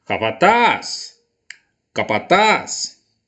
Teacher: o taz é a sílaba mais forte da palavra, é a última sílaba da palavra.